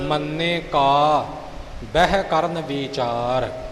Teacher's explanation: ਕਾ ਬਹਿ ਇਕੱਠਾ ਨਹੀਂ ਬੋਲ ਜਾਣਾ ਨਿਖੇੜਾ ਜਰੂਰੀ ਹੈ